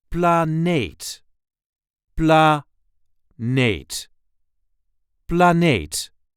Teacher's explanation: The emphasis here is on the second syllable.